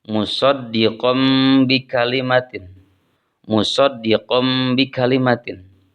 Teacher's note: Di sana ada tanwin pada huruf qaf, kemudian diikuti oleh ba. Maka tanwinnya diubah ke dalam mim atau ke bentuk mim. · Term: iqlab